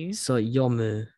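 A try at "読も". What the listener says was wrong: Should be an o sound. O. Yomo. Yomo.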